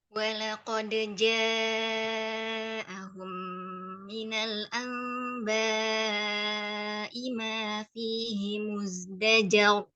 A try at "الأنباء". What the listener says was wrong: Tambah dengung pada amba'i.